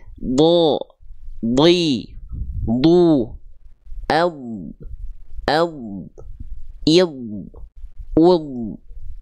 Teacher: ad memang tebal dia kerasanya berat banget